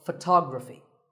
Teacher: the stress goes to the second syllable